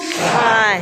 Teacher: Now the way you make this sound is you kind of place your tongue as if you're going to say an L, but instead of like actually saying L, you blow the air out of the sides of your mouth